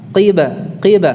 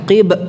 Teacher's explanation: qalqalahnya tidak condong ke fathah